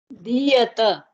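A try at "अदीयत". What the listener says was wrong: You forgot the akara. Adiyata. You cannot forget.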